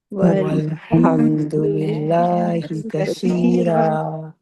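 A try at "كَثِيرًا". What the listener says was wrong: سا کی آواز ہے، زبان تھوڑی سی باہر دانتوں سے باہر، کثی، سین کی آواز نہ ہے، سیٹی کی آواز نہ ہے، کثیرہ،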